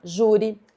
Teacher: Juri tem a penúltima sílaba mais forte. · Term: paroxítona